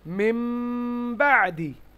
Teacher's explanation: নুন সাকিনের পরে যদি বা আসে তাহলে নুনের উচ্চারণটা মিম দ্বারা পরিবর্তন হয়ে যায়